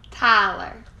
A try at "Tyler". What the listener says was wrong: No. It's Tyler. Not Tala. It's Tyler.